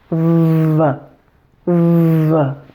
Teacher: The only difference is that the V is voiced, so you'll feel vibration here in your throat as the air is flowing through your mouth.